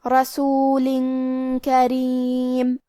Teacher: کلمت کریم کاف حروف الاخفاء میں سے ہے اور اخفاء کا معنی ہے چھپا دینا تو ہم یہ تنوین کو چھپاتے ہوئے اور غنہ کے ساتھ یہ حکم کو ادا کریں گے · کلمت رسول میں حرف الرا پہ زبر ہے تو یہاں را کا حکم ہے تفخیم. ہمیں را کو موٹی آواز میں پڑھنا ہے. · کلمت کریم میں را کے نیچے زیر ہے تو یہاں را کا حکم ہے ترقیق. ہمیں را کو پتلی آواز میں پڑھنا ہے.